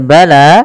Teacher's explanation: panjangkan huruf la-nya sepanjang 2 harakat karena la di sini ada alif kecil yang datang setelahnya dan ia berada di atas huruf ya. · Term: mad tabi'i